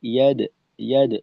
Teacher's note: পরে ইয়াদ খুলুনা, দালের কলকলা মুখ খোলা রেখে ইয়াদ, ইয়াদ ছোট করে, এখানে আমাদের বেশি সময় দেওয়ার দরকার নেই।